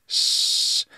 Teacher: s s sound like i do as an english speaker but they have a slightly retracted sound so it's sh and the pitch is slightly lower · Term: retracted s sound